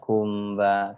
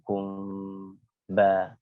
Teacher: Ikhfa syafawi yang dia samar pada 2 bibir, yaitu mim bertemu dengan ba